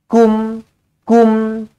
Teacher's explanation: mim mati izhar syafawi matikan dengan jelas